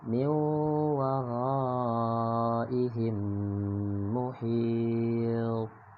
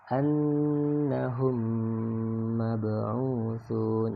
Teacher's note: Lebih jelasnya contohnya ya, ada kalimat min waraihim muhit. Jadi mimnya dimasukkan ke dalam huruf mim yang ada di hadapannya, disebut dengan idgham mimi. Ditahan ya, disertai dengan dengung.